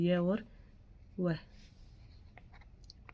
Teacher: वे व्यंजन वर्ण जिनका उच्चारण करते समय वायु बिना संघर्ष के बाहर निकल जाती है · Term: अर्ध स्वर